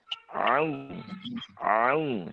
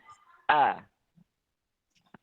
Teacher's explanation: Huruf ain tempat keluarnya adalah di tenggorokan bagian tengah ya. Tenggorokan bagian tengah dan suaranya itu seperti diayun sedikit.